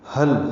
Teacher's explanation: ہا اقصی حلق سے ادا کرتے ہیں اور لام ساکن پہ اظہار